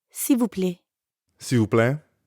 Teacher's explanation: when speakers are in a hurry, that L sound at the end often gets left off.